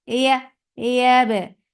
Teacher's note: Yeah is soft for fatha open jaws attached with ba. For yeah, you are lifting the middle part of your tongue towards your palate, but it is not touching. That is making ya very soft.